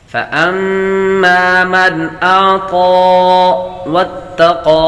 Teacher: نون ساکن کے بعد حمزہ حروف حلقی میں سے آ رہا ہے تو غنہ نہیں کریں گے، میم پر غنہ کریں گے